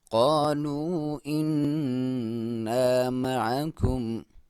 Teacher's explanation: आइन को क्लियर हल्के दरमियानी हिस्से से, या नून मुशद्दद है, नून पे शद है तो आप नाक में से आवाज़ निकालेंगे